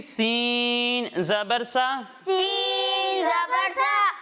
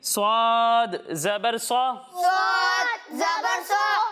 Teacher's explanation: سین کو ہم باریک پڑھیں گے اور سواد کو ہم موٹا کر کے پڑھیں گے، کیونکہ سواد حروف مستعلیہ میں سے ہے جن کو موٹا پڑھنا ضروری ہے۔